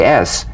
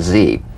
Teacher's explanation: to the z unvoiced s sound frickative tongue to gum Ridge the S is like the Z except it's unvoiced so it's a same tongue placement as the Z the Z the S is like a gentle Escape of steam